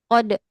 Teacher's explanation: Jadi kalau baca Al-Qadr itu ro-nya dihilangkan.